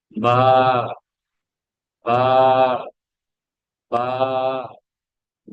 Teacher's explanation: এই দুই ঠোঁট থেকে বা উচ্চারণ করা হবে এবং ঠোঁটগুলো স্বাভাবিক থাকবে